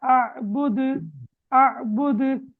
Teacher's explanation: கல்கலா செய்து ஓத வேண்டும் கலக்கை குலுக்கி அசைத்து ஓத வேண்டும்